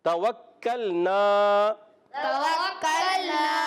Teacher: واو کاف سے ملے گا، واو کی ادائیگی واو پر زبر ہے، واو ہونٹوں کی گولائی سے. واو جب کاف سے ملے گا کاف مشدد ذرا رک کر ادا کریں گے. کاف کو لام سے ملانا ہے، لام کو ہلانا نہیں. · واو جب کاف سے ملے گا کاف مشدد ذرا رک کر ادا کریں گے. کاف کو لام سے ملانا ہے، لام کو ہلانا نہیں. لام ساکن ہے پر ہلائیں گے نہیں.